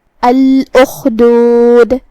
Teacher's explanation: حرف الخا کی ادائیگی حلق کے اوپر والے حصے سے ہے، خا حروف التفخیم میں سے بھی ہے تو ہم اسے بھاری آواز میں پڑھیں گے. آخر میں یہاں بھی ہم دال پہ رکیں گے تو اس کا حکم ہوگا قلقلہ.